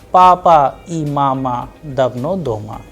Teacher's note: It is a very simple statement, simple sentence, that is why the sound is flat